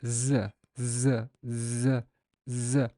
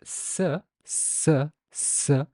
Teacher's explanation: the z sound does make your vocal cords vibrate, while the sound s, s, s has no vibration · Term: voiced